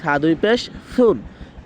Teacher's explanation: জিহ্বার আগার সামনের দুই দাঁতের আগার সাথে মিলিয়ে তারপরে সাটা উচ্চারণ করতে হবে